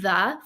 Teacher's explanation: the word the for example has a Digraph it has th and then it has a lazy schwa uh sound